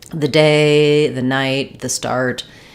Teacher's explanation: if my next word starts with a consonant then I use the schah